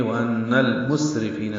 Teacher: وَأَنَّ میں نون مشدد پہ غنہ ہے اور المسرفین کی لام سے ملا دیں گے.